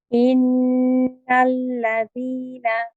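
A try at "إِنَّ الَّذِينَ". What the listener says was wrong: Yeah, I think what's happening is, your lam, your first lam is heavy. You're saying innal la, right? It's innal. Both lams are light. So at the moment, in these two words, innal ladina, none of these letters are heavy. So we keep nice and relaxed.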